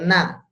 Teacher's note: Nah kalau na itu udah nempel ke gigi. Dan yang main bukan tepinya tapi ujungnya. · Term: nun